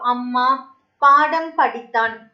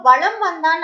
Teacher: மகர மெய்யானது அந்த அரை மாத்திரையிலிருந்து குறைஞ்சு கால் மாத்திரை அளவுதான் ஒலிக்குது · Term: மகர குறுக்கம்